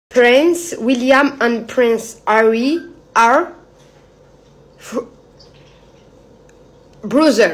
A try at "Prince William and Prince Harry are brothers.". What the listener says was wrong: Mais il manque quelque chose puisqu'ils sont deux. Oui, brothers. Et on prononce le S.